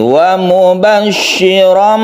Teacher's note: ketika kita meneruskan tanwin bertemu dengan ba ini berubah menjadi mim, berubah menjadi mim mati. Wa mubashshiram, kita panjangkan sedikit, dia dengung juga ya meskipun itu iklab.